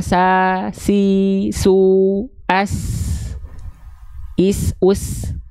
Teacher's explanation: Terbuka mulutnya dan aula mulut dan pangkal lidah tidak naik tapi terhampar. Maka kalau huruf sin dilafalkannya terasa lebih ringan.